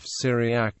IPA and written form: ˈsɪriæk (Syriac)